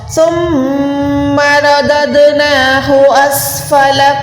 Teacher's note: سین پہ سیٹی کی آواز ہوگی. فا پہ ایک حرکت لام پہ ایک حرکت.